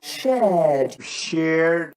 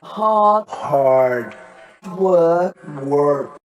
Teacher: in the words shared hard and work most brits will not pronounce the r sound but most americans will